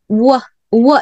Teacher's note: W 발음 은 ' 우 - 어 ', ' 우 - 어 ' 소리 입니다 . 그러니까 ' 우 ' 와 ' 어 ' 를 빠르게 발음 하면 ' 우 - 어 ' 소리 가 나 는 거 예요